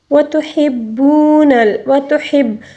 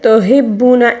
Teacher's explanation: ہا کو حلق کے درمیانی حصے سے ادا کریں گے